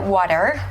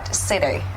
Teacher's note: in American English, people often, transform the T into the D sound